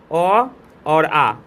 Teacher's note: तो कंठ से बोला जाता है